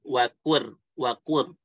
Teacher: cukup bergetar di ujung lidah aja, bukan di tengah-tengah sampai wakur robbi, cukup wakur gitu ya. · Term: at-takrir